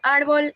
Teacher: La palabra árbol es grave, ya que su sílaba tónica es la penúltima